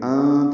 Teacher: انت میں نون ساکن کے بعد تا آنے کی وجہ سے اخفاء ہے